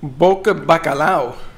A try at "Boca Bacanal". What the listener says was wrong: Boca Bacanal. Bacanal. It's not bacalao, it's bacanal. This is bacanal.